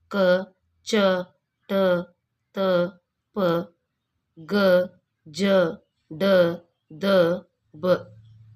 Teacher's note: ಕಡಿಮೆ ಉಸಿರಿನಿಂದ ಉಚ್ಚರಿಸಲಾಗುವ ವ್ಯಂಜನಗಳನ್ನು ಅಲ್ಪಪ್ರಾಣಾಕ್ಷರಗಳು ಎಂದು ಕರೆಯುತ್ತೇವೆ